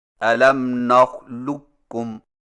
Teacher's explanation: قاف کی آواز کو بالکل ختم کر کے صرف ایک کاف مشدد سے پڑھیں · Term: ادغام تام